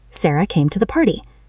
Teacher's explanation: Notice how came and party are long and clear. To duh is very fast.